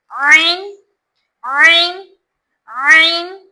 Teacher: ऐन को बीच हलक से निकालते हैं।